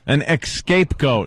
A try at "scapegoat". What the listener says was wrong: Sam, the man puts the emphasis on the wrong part of the word. Escaped goat.